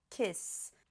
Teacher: Essa palavra termina com um som desvozeado.